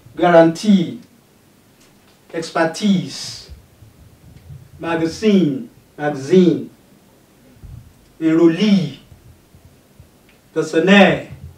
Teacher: Three syllable words having stress on the third syllable.